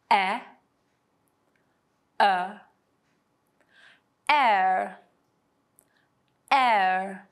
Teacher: the last one of this lesson is air it combines e and uh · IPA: /eə/